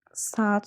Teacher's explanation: Bu sözlərdə A-ların biri düşür, digərləri uzun tələffüz olunur.